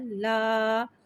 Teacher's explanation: الف مدہ کو ایک الف یعنی 2 حرکات کے برابر کھینچ کے پڑھیں گے اور زبر کو منہ کھول کے ادا کریں گے